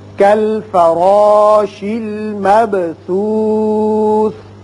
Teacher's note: با حروف قلقلہ میں سے ہے، اس کی صفت قلقلہ ادا کریں گے